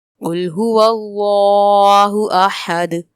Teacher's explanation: احد پہ وقف کی صورت میں دال میں کلکلا کریں گے · قل میں کاف حروف مستعلیہ ہے، پر پڑھیں گے. هو اللہ میں اسم جلالت اللہ عز و جل کے نام کو پر پڑھیں گے.